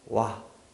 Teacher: 우라는 입모양을 가지고 있다가 아라는 소리가 연결되면서 순간적으로 와 이런 식으로 나는 소리에요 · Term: 반모음, 이중모음